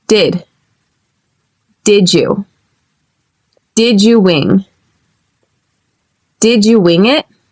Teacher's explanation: Notice how did and you turns to did you or did ya. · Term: reduced form